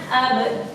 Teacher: Terdapat qalqalah sughra, yaitu dipantulkan ya.